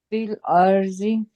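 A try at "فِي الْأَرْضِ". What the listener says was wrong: अर्दी, हाँ कोशिश करें, जी भी ठीक है लेकिन कोशिश करें कि दौद पड़े, दी, फिल और दी।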